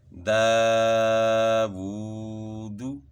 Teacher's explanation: دال کے اوپر کھڑا زبر ہے، واو کے اوپر الٹا پیش ہے، تو ان کو ایک الف کی مقدار کے برابر کھینچ کے پڑھنا ہے